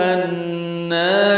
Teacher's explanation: نون پر کھڑا زبر ہے، 2 حرکات لمبا کریں گے